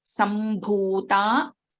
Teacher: Bha is a Mahaprana in this case. So this Ma is different here.